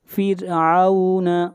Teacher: را کو باریک پڑھا جائے گا، را سے پہلے زیر ہے